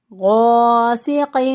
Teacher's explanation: غین جو ہے یہ بھی پر حروف میں سے ہے تو اس کو پر پڑھیں گے، موٹا پڑھیں گے۔ غاسق، غین زبر الف غا، یہ الف مدہ ہے، اس پہلے والے حرف پر زبر ہو تو الف مدہ ہو جاتا ہے، ایک الف کے برابر اس کو لمبا کریں گے، سین کے ادائیگی میں چڑیا جیسی آواز یا سیٹی جیسی آواز آنی چاہیے۔